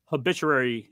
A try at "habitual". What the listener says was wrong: Habitual. You were combining habitual and obituary.